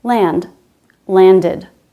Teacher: we do make a sound for the letter E in the ED ending, and we have an extra syllable